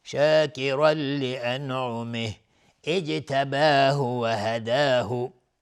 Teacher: اینجا جیم هم قلقله میخواد چون ساکنه